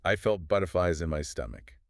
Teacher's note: Make sure you heard that hiss at the end of butterflies.